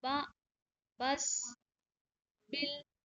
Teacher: कैसे अदा करेंगे? तो बा जो है वो दोनों होठों के मिलने से अदा होता है। बा, बा, जब तक दोनों होठ नहीं मिलेंगे बा जी, अदा नहीं।